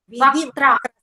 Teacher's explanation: It's not Kha. It's not mahaprana. It is alpa prana with ta and ra.